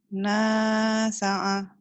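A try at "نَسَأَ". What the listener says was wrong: Ain. Bukan ain, hamzah. Nasa'a.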